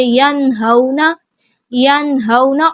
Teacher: نون ساکن کی آواز کو واضح کریں گے، غنہ نہیں کریں گے، ین اس طرح سے کر کے نہیں پڑھیں گے، ینہونا، ینہونا۔ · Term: اظہار